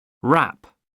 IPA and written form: ræp (wrap)